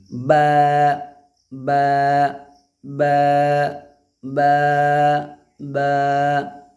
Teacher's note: दोनों होठों का तरी का जो हिस्सा है यानी भींगा हुआ जो हिस्सा है वहाँ आप उनको सटाएंगे तो बा अदा हो जाएगी